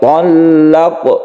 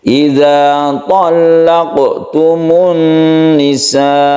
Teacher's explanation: Talaqtumun nisa, ada tasydid lam yang kita tekan juga. Talaq, sukun qaf ini kita qalqalahkan karena qaf itu berada di tengah ayat atau di tengah kalimat, maka dia disebut qalqalah sughra. Sughra artinya kecil.